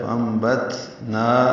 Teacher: تا ساکن پہ ہمس ہے، فانبتنا، نا الف مدہ ہے، 2 حرکات لمبا ہے. · با آنے کی وجہ سے اقلاب ہے، اب نون کی جگہ میم پڑھیں گے